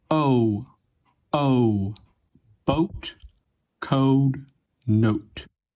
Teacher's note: begins in the mid back of the mouth a little above /ɔ/, and then rises toward /ʊ/. The shape of the lips also changes a bit. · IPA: oʊ